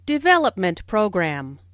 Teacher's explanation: Since these two words make a compound noun, the main stress falls on development.